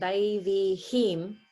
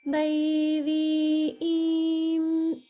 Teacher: it's a double swara, but it's just a regular E sound. So it's like E, E. So there's no extra H in there.